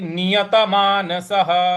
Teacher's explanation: विसर्ग है उसके आगे कुछ नहीं है इसलिए उसका ह का उच्चारण ले आएंगे।